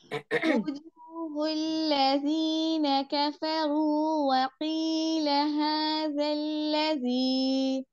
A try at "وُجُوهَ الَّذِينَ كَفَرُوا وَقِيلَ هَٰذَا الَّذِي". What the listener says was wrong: فتحہ والے حروف ہیں نا آپ کے، وہ ایسے ہو رہے ہیں، ن کے فے، یوں نہیں ہونا چاہیے. ٹھیک ہے، ہونٹ اوپر کی طرف کھولنے آپ کے. لذین کفروا، کفروا نہیں، کفروا.